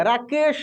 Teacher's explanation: जब आप इस श का उच्चारण करेंगे ना तलव्य श का आपका मुंह पूरा खुलेगा